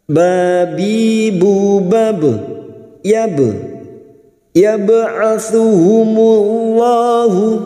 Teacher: ba sukun yang mati asli di tengah kalimat qalqalah sugroh jangan lupa dipantulkan.